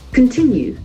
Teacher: there are three syllables accent falls on the second syllable